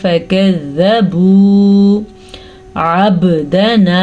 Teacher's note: با کے اوپر قلقلہ ہو رہا ہے کیونکہ با پہ ساکن ہے